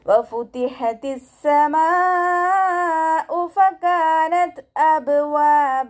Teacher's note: വാവ് ഉച്ചരിക്കുമ്പോൾ ചുണ്ടുകളൊന്ന് സർക്കിൾ ചെയ്ത് കൊടുക്കുക